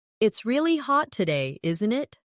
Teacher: Notice how isn't it can sound like in it in very casual British English.